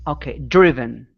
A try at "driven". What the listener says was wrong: Good. Nice job.